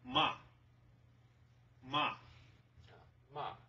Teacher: So falling tone means just harsh, like downward. · the fourth tone is a falling tone